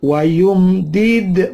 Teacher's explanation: mim mati ketemu dal, idhar syafawi.